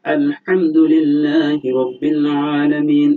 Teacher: যেমন এখানে হা, যেমন আমরা বলি আলহামদুলিল্লাহি রাব্বিল আলামিন। এখানে আলহামদু হাটা উচ্চারণের সময় এটা কণ্ঠনালীর মধ্যভাগ থেকে হয়